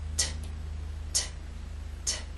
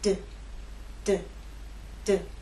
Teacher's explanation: These 2 consonant sounds are made basically the same way, but T is quiet, it's unvoiced, and D is voiced. So you'll feel no vibrations when you make the true T sound. T, t, t. And you will feel vibration when you make the D sound.